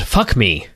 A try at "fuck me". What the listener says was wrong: Yeah, I think the way you emphasized that, put the emphasis on the wrong syllable.